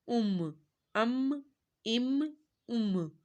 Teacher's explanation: میم دونوں ہونٹوں کے خشک حصے سے ادا کرنا ہے